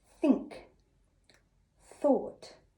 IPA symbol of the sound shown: θ